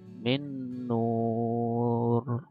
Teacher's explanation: Maka kita bacanya memasukkan dan mendengung. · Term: idgham bi gunnah